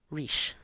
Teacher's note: both sounds are palatalized because they are only surrounded by a front vowel, /i/